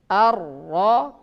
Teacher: Apabila dia bertasydid, ya getarannya 2 kali dan tidak boleh lebih.